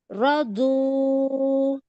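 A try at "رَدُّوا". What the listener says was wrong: You don't pronounce the dal sound. Okay, shrink your tongue and touch the makhraj, side of the tongue. back part of the tongue. Sorry, not back part of the hafa. Hafa mean the side, back part of the side part.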